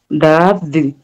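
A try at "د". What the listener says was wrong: Ahí está, muy bien.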